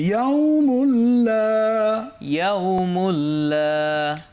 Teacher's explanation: মুল্লা, এখানে মুন মিম দুপেশ মুন বললাম না, মুল বললাম